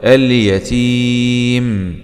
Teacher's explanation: نقف عليها مد عارض للسكون